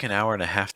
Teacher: When you say an hour and a half, the stress is on half. An hour and a, you can say pretty fast.